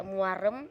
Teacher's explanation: vokal kedua diucapkan dengan posisi lidah lebih rendah daripada yang pertama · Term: diftong turun